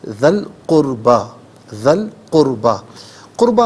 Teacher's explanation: قربہ میں را ساکن ما قبل کاف پر پیش ہے، را ساکن کو پر کر کے پڑھا جائے گا